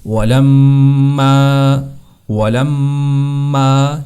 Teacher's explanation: اس کی آواز کو ناک میں لے جانا ہے، لمبا کرنا ہے اور سختی سے ادا کرنا ہے · دونوں ہونٹوں کو ملانا، میم کو تھوڑا سختی سے پڑھنا اور اس کو لمبا کرنا ہے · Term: میم مشدد